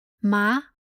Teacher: the Chinese word ma which means hemp carries the second Rising tone